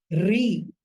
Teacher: as we chant Re, it's a fricative sound